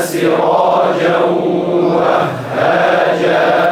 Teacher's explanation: لما نقول سراجا ننطق صوتين معا صوتين مع واو من الشفتين وغنه من الانف اذا قال القارئ سراجا اتى بواو ولم ياتي بالغنه وجعلنا سراجا